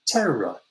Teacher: we don't pronounce the r at the end of the word terror